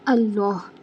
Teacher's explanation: اللہ کا جو ہاں ہے وہ حلق کے آخر سے ادا ہوتا ہے